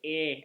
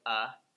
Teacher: I've noticed that the Spanish speakers... they'll sometimes say 'eh', instead of 'uh'. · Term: schwa